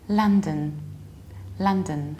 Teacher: You don't have lo, you have a la, like La La Land, but a bit more reduced.